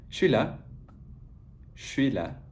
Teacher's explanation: Part 3 is the combination of j and s. So when these two sounds combine, they elide and become sh. For instance, je suis is just said suis.